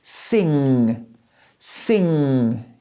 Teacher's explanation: The back part of my tongue touches the top of my mouth and I say sing, sing. You see, it stops the air from coming out, but I use the back part of my tongue, not the front part.